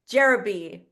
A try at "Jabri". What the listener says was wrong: were close, Jabri. I think one of those E's is silent.